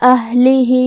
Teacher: کلمت اہلہ میں یہاں ہا ساکن ہے، لہذا ہمیں ہا کو ظاہر کرنا ہے. ہا کی ادائیگی حلق کے نیچے والے حصے سے ہے. لام کے نیچے زیر ہے لہذا اس کا دھیان رہے.